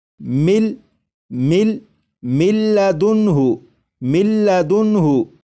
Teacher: लिखा हुआ है मिन मिन, लेकिन जब नून को लाम में इदगाम करेंगे तो नून की आवाज़ ख़त्म हो जाएगी और मीम के बाद फिर लाम की आवाज़ आएगी और यहाँ पर जब इदगाम करेंगे तो गुन्ना भी नहीं करेंगे।